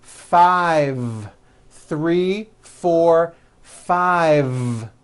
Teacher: I said five with a voiced V